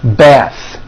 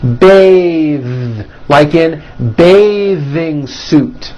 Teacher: The word bath is a noun with an unvoiced TH. Bath. But when you change it into a verb, to bathe, the vowel changes to an A sound and the TH is voiced.